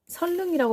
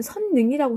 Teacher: 설릉이라고 했다면 선인데 설이 됐으니까 니은이 리을로 교체된 것이죠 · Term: 유후마